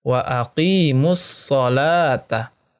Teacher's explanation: Karena alif lam bertemu dengan huruf shad, alif lamnya tidak dibaca, langsung ke huruf shadnya. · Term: alif lam syamsiyah